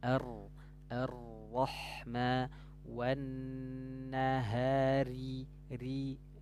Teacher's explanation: sifat takrir nah takrir artinya apa ujung lidah ber getar